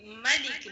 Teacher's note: میم پر کھڑا زبر ہے، ایک الف کی مقدار کھینچ کر پڑھیے گا۔